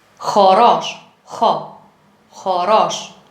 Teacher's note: the back of the tongue touches the velar